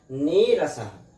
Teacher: दीर्घ स्वर आदेश होने के बाद नीरसः, निर्धन रसः, इस र का लोप हुआ, और इसके पूर्व में जो ई है, इसको दीर्घ आदेश होकर नीरसः बना है